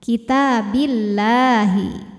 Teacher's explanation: Lam jalalah dibunyikan secara tarqiq sebab sebelum lam jalalahnya huruf ba harokatnya di bawah harokat kasroh, maka lam dibaca tipis. Jadi bunyinya lah bukan loh ya.